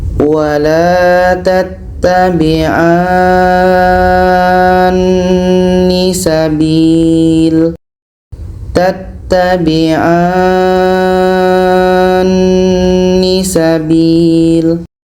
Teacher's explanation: Kebetulan nun tasydid hukumnya dengung, wajibul gunnah. Jadi kita panjangkan A ini 6 harokat baru masuk kepada dengung nun tasydid 2 harokat. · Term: mad lazim kilmi mutsaqqal